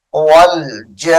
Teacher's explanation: کو ہم مسنون پڑھیں گے، مسنون، والجان، واو لام زبر ول، جیم کو لمبا کریں گے 4 سے 5 الف کی مقدار ، والجان، جا انا نہیں پڑھنا اس کو، جیم کو لمبا